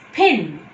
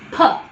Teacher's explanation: when I close my lips and when the air comes out to pronounce P, I say with an extra breath force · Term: aspiration